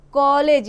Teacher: इसको क्या बोलते हैं औ करके प्रोनाउंस करते हैं, है ना, ओ करके। यह आ और ओ के बीच की ध्वनि होती है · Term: आगत ध्वनि